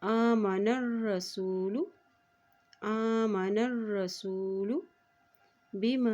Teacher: हमज़ा के ऊपर खड़ी ज़बर है तो उसको एक हरकत लंबा अदा करेंगे